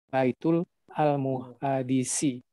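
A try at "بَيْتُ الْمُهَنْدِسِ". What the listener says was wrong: Kalau Baitul tidak usah dibaca lagi alifnya. Jadi Baitul Muhandisi begitu. Jadi di sana alifnya tidak dibaca. Karena hamzah wasal ya begitu. Baitul Muhandisi begitu bacanya.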